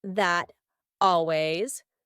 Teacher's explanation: This isn't always done, but it's often done when native speakers are talking quickly. We link together words by making the final T change into a D.